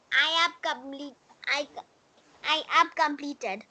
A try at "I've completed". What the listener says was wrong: नहीं, I have नहीं बोलेंगे बाबू. I've completed, I've learned, I've played, I've seen, I've. I के बाद ab नहीं बोलेंगे. I के बाद I've seen.